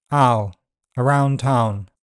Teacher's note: In RP, ow starts centrally or to the back. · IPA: /aʊ/